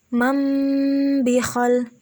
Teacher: ketika nun mati atau tanwin akan bertemu dengan huruf ba, maka bibir atas dan bibir bawah tersebut posisinya tertutup. dan juga diiringi dengan suara dengung kurang lebih 2 harokat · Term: iqlab